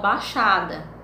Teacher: os falantes da língua falam baixada, não falam o i